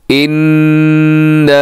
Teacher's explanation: थोड़ा सा टाइम आपने आवाज़ को नाक में रखना है। इन्ना, और लंबा भी करना है क्योंकि अलिफ है और अलिफ से पहले ज़बर हो, जैसे यहाँ पर है तो इसको भी ये अलिफ मद्दा है, लंबा करना है आपने।